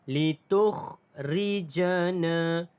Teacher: Litukhrijana. Na dibaca dengan panjang 2 harakat kerana mad asli huruf alif.